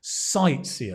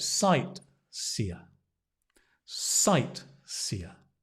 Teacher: Not an easy word. Sightseer. The stress on the sight.